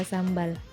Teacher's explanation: Karena M dan B keduanya ini sama-sama di bilabial